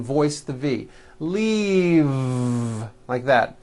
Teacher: throughout the whole word and voice the V leave like that if you stop the voicing at the end of the vowel E then you would be saying leaf with an unvoiced F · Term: voiced V